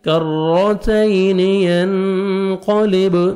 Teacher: نون ساکن کے بعد قاف ہے، آپ نے اخفا کرنا ہے